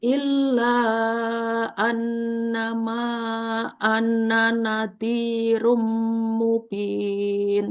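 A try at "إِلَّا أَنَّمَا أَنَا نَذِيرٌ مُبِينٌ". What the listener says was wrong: Cuma ananya, Bu, biasa. Bukan anna, tapi anana. karena nggak ada tasdid kan nunnya.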